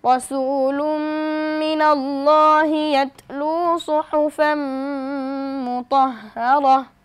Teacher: তানবিনের বামে মিম এসেছে, অর্থাৎ ইদগামে বা গুনার হরফ আমরা গুনার সহিত পড়ব